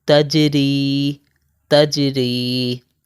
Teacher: جیم کے اوپر ہے جزم، جیم کے اوپر ہے ساکن، تو یہاں پر ہم قلقلہ کریں گے. یہ حرف قلقلہ میں سے جیم آ رہا ہے ادھر.